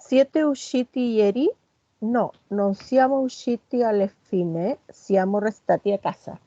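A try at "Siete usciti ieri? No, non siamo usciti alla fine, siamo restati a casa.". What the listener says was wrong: Perfecto, súper.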